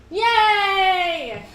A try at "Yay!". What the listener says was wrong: That's too excited.